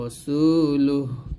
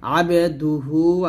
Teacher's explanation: ওয়াকফ ধরলে সেই হাটা সাকিন হয়ে যাবে। আর যদি ওয়াকফ না ধরেন মিল করে পড়লে সেখানে এক আলিফ টান দিতে হবে